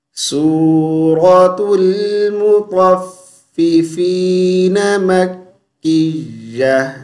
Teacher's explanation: را کو موٹی آواز سے پڑھیں گے، طا کو موٹی آواز سے پڑھیں گے